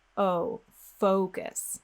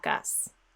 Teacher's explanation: if you round your lips you glide them forward the word will sound like oh focus if you relax your lips and you drop your tongue just a little bit it will sound like us